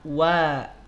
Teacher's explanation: Sehingga bunyi vokal jadi bunyi vokal O. Sedangkan wawu mesti terbuka. Wa, tidak wo. Tidak wo, tidak naik pangkal lidahnya. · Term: bunyi vokal A